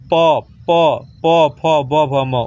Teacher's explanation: ओष्ठ में ओठ सटेगा है